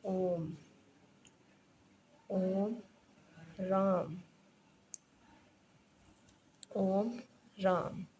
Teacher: ओम को हम ओ नहीं बोलेंगे तीन मात्रा तीन मात्रा का समय लेंगे